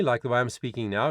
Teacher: it's connected it's a clean sound there's no breathiness on it